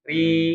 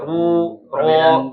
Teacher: kalau huruf ro ini dia ketika kasrah dibaca tipis ya tapi kalau dia fathah ataupun dommah maka dibacanya dia tebal gitu ya. Jadi ri gitu ya, Rya.